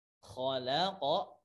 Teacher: Ma dua harakat, khalaqa, kho ditebalkan, ada ngoroknya di situ, kho ya.